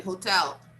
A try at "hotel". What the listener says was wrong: No, the stress is on the second syllable. Hotel. Okay, we don't stress the first syllable like usually Brazilians like to do this. But no, the stress is on the second syllable. So we don't say hotel, we say hotel.